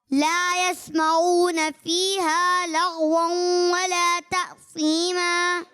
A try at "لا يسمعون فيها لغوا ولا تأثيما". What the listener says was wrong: ماشاءاللہ بہت اچھی کوشش کی آپ نے، لیکن لا یسمعون اس میں عین کی آواز کو واضح کر کے نکالنے کی کوشش کریں، ٹھیک ہے؟